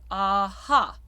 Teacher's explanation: if you say the word aha, you have the dark A followed by the bright A.